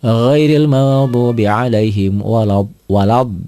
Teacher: Mad lazim musaqqal kalimi yaitu mad tabi'i ketemu huruf bertasydid, panjangnya 6 harokat.